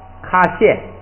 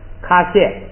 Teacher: 是过去时跟命令时。现在大家对这个过去时、命令时这些呢，先不用注意，就是主要是先学发音，以后呢咱们再学，它那个很有规律的，好记。第15个，卡谢，这个读的时候就是注意第二音节啊，第二音节这个虾，撒呢本来是这个变音变调，要把调这个音变成调变成去声。它如果不是去声啊， 在第二音节它平调也要变去声的，所以第二个音节就变成去声了